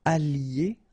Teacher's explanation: I don't make the liaison just for you to listen carefully